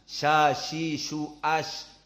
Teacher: Makhrajnya apalagi sya bukan atrof lisan, wastu lisan. Sya, shi, shu, ash, wastu al-lisan.